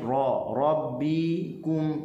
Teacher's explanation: Rabbikum, ra tebal, hujung lidah berada di langit